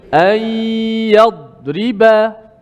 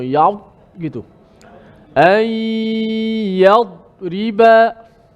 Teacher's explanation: Yadriba, da tak boleh qalqalah. Yad huruf yang kuat tapi tak boleh kita lepaskan pantul.